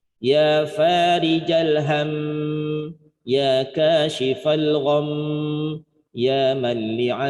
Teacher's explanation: bacanya ditambah gunnah musyaddadah dengungnya 2/3 harokat